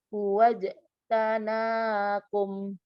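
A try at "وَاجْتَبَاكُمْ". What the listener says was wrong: Enggak ada na. Tabakum.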